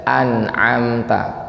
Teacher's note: Ain ini makhrajnya di tengah lidah kayak huruf ha